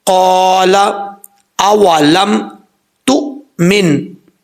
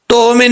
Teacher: حمزہ جھٹکے کے ساتھ پڑھا جائے گا، اس کو بھی اکثر لوگ جھٹکا بھی دیتے ہیں اور قلقلہ بھی ساتھ کر جاتے ہیں، نہیں کرنا۔